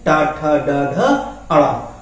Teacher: इनका उच्चारण स्थान जब हम जीभ को उल्टा करते हैं और उल्टा करके बोलते हैं तो वो मूर्धा, ये इसको मूर्धा बोलते हैं। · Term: मूर्धन्य ध्वनियां